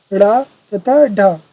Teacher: जो वर्ण जीभ को लुढ़का कर उच्चारित किए जाते हैं उन्हें उत्क्षिप्त या द्विगुण वर्ण कहते हैं।